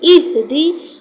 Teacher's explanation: حمزہ زیر، ہا حلق کے نچلے حصے سے ادا ہونی چاہیے. دال کے نیچے زیر ہے، الف سے پہلے زبر، الف مدہ، ایک الف کا ٹائم دیں گے اور نون کو ہم صاد سے ملاتے ہوئے پڑھیں گے.